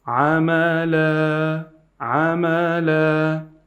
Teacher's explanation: instead of saying the tanween, you are saying the alif with a longer voice, like amala, amala. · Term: Mad iwad